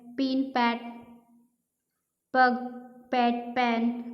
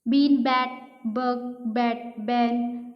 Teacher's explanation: हम लोग पी sound से हम लोग वाइब्रेशन फील नहीं करते हैं, बी साउंड से वाइब्रेशन फील होगा